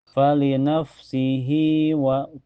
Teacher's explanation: harakat kasrah diisi setelahnya harakat fathah di wa bacanya cukup panjang dua harakat Dan setelahnya lagi tidak ada hamzah ya. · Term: mad silaqir